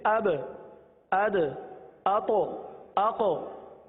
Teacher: जब इसकी अदायगी होती है तो मखरज में जुम्बिश ही होती है, जुम्बिश ही होती है, हरकत सी होती है, जिसकी वजह से आवाज लौटती हुई आती है। जैसे अब, अद, अतो, आको, तो ये कलकला है।